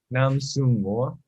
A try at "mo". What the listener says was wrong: Mo. You and your lady friend always add these R's to the end of your open vowels. Mo, not mer.